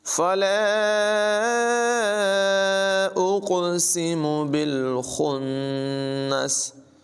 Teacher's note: قاف ساکن ہے، اس میں قلقلہ ظاہر کریں گے، قاف کو پر پڑھیں گے ، فلا اقسم بالخنس، خا کی آواز پر ہوگی، نون مشدد